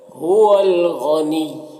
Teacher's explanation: ہول، یہاں پر الف لام حروف قمری غین کے شروع میں ہے تو لام کو پڑھیں گے، الف کو نہیں پڑھیں گے۔ غین حروف مستعلیہ میں سے ہے تو اسے پر پڑھیں گے، اور یہاں پر وقف کریں گے تو یہ پیش سکون سے بدل جائے گا